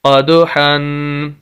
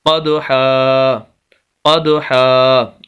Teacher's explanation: دو زبر آگے الف آ جائے تو وقف کی حالت میں ایک زبر اور الف پڑھا جائے گا۔